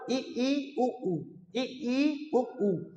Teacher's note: मुख लगभग बंद होता है, पूरा बंद नहीं होता